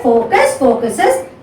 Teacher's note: The stress is on the same first syllable.